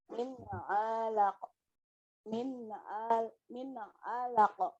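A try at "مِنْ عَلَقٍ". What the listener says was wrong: Oke, masih berat. Jangan ditahan Bu ya. Relax aja, relax. Coba Ibu bilang lako gitu. Nah, begitu Bu. Min alaqo.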